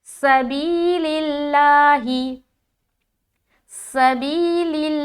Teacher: इसमें हम जब अदा करेंगे तो सीटी की आवाज़ झलकनी चाहिए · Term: हर्फ सफ़ीरिया